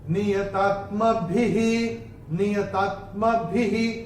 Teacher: विसर्ग चरण की समाप्ति पे आ रहा है तो उसका उच्चारण केवल और केवल ह ही होगा